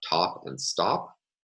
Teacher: So for instance, we can contrast in English the words top and stop, where we have an aspirated alveolar stop in the word top, but not in stop.